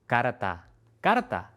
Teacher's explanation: Esta r que va antes de una t es una de las más difíciles para los estudiantes. Es una r simple como en pero.